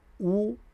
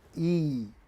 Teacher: Rounded lips would give you u and flat lips will give you e.